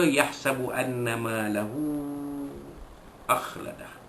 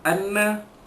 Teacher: Anna nun sabdu, wajibul ghunnah, wajib dengungkan dua harakat.